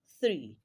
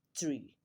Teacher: It is not pronounced as ts, rather it is pronounced as your tongue in between your upper and lower front teeth. So when you pronounce that word, it has to sound like the sound that is prevalent therein, and that is voiceless dental fricative. · word three is a voiceless dental fricative